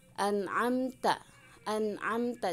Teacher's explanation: beberapa [Musik] catatan yang harus diperhatikan untuk kaitannya dengan izhar ya cara pembacaannya harus jelas pastinya ya harus jelas ya kemudian tidak didengungkan